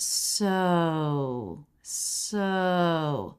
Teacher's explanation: with the O diphthong, you are going to want a little bit of lip rounding. We don't want so.